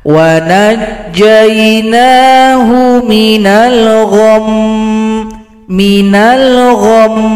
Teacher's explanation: Kalau berhenti pada mim yang tasydid mimnya disukunkan berikan bunyi dengungan